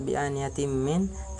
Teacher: Kemudian bi'aniyatim min, pada lafaz bi'aniyatim min terdapat hukum bacaan idgham bi gunnah, itu apabila tanwin bertemu dengan huruf mim, maka cara membacanya masuk dengan mendengung